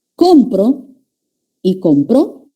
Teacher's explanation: no le he cambiado una vocal o una consonante lo que ha cambiado es la ubicación del acento